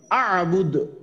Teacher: আবার লাস্টে দাল আসাতে কলকলা হবে